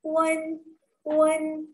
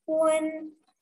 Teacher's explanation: Untuk UN, kita membaca seakan ada E di tengahnya.